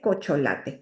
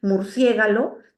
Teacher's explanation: en este proceso hay una inversión de los sonidos cambia el orden de los sonidos pero sí es importante que estén todos solamente que los cambia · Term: metátesis